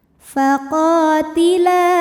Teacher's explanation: maka qof panjang dua harokat. Faqotila La mad jaiz munfashil karena mad thobi'i bertemu hamzah dalam dua kata. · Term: mad thobi'i dzohiri